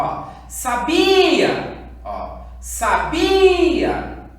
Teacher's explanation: O bi foi a minha sílaba mais forte quando eu chamei a minha palavra.